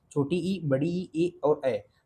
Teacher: जीभ के अगले हिस्से से जो उच्चरित हो उसे अग्रस्वर कहते हैं।